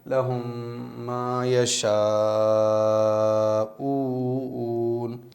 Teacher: حرف مد کے بعد میں حمزہ آ گیا ہے اسی کلمے میں، تو یہاں پر ہم 2 الف 3 الف 4 الف کھینچ سکتے ہیں۔ لہم ما یشاؤون، شین صاف صاف ہونا چاہیے، ما یشاؤون۔ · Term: مد متصل